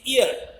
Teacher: R is not pronounced because R is not followed by a vowel sound. So e a both is only pronounced. · Sixth diphthong is e a. First sound is e and second is a. The sound glides from e to a.